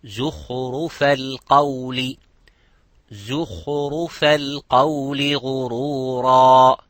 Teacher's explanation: Zay also here is close to the kha. The kha is mufakham, ra is mufakham, but the zay is muraqqaq.